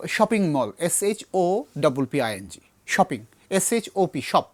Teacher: এই এসএইচ এর ইংরেজি বাংলা প্রচুর শব্দ আছে, এরকম প্রচুর শব্দ, যেমন শপিং মল আমরা যখন বলি আমরা এটাকে বাংলাই মনে করি, ইংলিশ মনে করে বলি, কিন্তু এসএইচ দিয়ে তো শুরু, এসএইচ যুক্ত যে সাউন্ডগুলো বাংলা শব্দে ব্যবহৃত হচ্ছে মূলত এগুলো ইংলিশ থেকে আসছে এবং উচ্চারণটা হবে শীর্ষধ্বনি স।